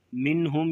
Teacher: اسے ایک الف کے برابر لمبا کر کے پڑھیں گے، منہم یہاں پر اظہار ہوگا یعنی غنے کے بغیر پڑھا جائے گا